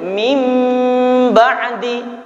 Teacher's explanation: Ini huruf nun ini dirubah menjadi mim. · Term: iqlab